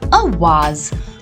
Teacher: In the British English, it is usually called a vase. The S here gives a Z sound, a vase. But in the American English, it is pronounced as a vase.